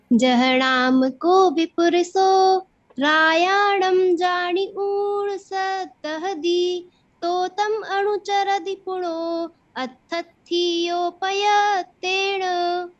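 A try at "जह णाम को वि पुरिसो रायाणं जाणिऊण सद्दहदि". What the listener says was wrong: बहुत अच्छा।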